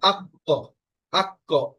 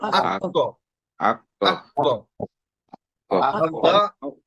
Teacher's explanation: কফ হচ্ছে কলকলার হরফ, এই জন্য এখানে একটা ধাক্কা লাগবে।